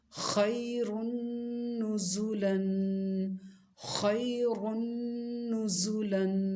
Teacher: خا کو موٹا پڑھنا ہے اور را کو بھی موٹا پڑھنا ہے. زا کی آواز شدت والی ہوگی اور سیٹی والی آواز ہوگی زا کی. نون پر غنہ کرنا ہے.